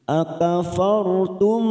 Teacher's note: ada huruf ra sukun karena didahului fathah, kita baca tafkhim